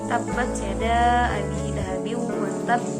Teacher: ba termasuk ke dalam sifat qalqalah atau memantul